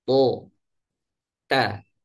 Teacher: To dan ta secara makhraj sama, yaitu ujung lidah bertemu dengan gusi atas.